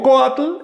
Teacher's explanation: Si digo coatl, el acento recae sobre la o.